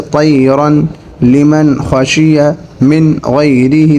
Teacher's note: हर एक के अंदर नून साकिन और तनवीन की आवाज़ बिल्कुल ज़ाहिर हो रही है , जैसे तयरन, लिमन, खशिया, मिन गैरिही, देखें नून बिल्कुल साफ